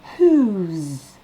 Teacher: Avec le S, ça va se prononcer whose. Comme un Z à la fin. Whose. Ensuite, on fait la liaison avec absent.